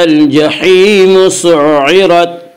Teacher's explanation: الف کو نہ پڑھیں گے، صرف لام پڑھا جائے گا۔ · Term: حروف قمری